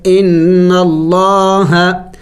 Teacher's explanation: دیکھیں نون مشدد ہے اور نون مشدد پر ہمیشہ غنہ کیا جائے گا، ان اللہ، لفظ اللہ سے پہلے زبر ہے تو موٹا پڑھیں گے